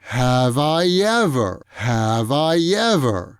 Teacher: you'll notice that that whole sound is produced in one breath